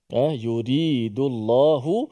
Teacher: Lam tebal bagi kita punya kiraat kita, riwayat Imam Hafs An-Asim, ialah pada lafaz al-jalalah yang mana sebelum dia berbaris di atas dan berbaris di depan. · Lafaz al-jalalah, lafaz Allah ditebalkan.